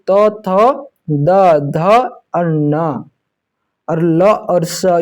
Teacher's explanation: चौथा में दंतन्य वर्ण, जहां दंत से होता है उच्चारित। ठीक है, जब हम लोग बोलते हैं तो जीभ दंत से छूता है